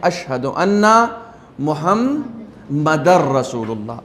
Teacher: نون ساکن نہیں پڑھا جائے گا، بلکہ کیا پڑھا جائے گا؟ بعد والا حرف پڑھا جائے گا، اس کو تشدید دے کر پڑھا جائے گا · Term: ادغام